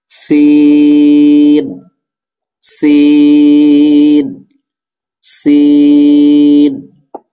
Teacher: এরপর সিন, সিনও একই মাখরাজ, অর্থাৎ এই ঝা যেখান থেকে উচ্চারিত হয়েছে সিনও সেখান থেকেই উচ্চারিত হবে। জিহ্বার আগা, সামনে, নিচে, দুই দাঁতের আগা, সেখান থেকে উচ্চারিত হবে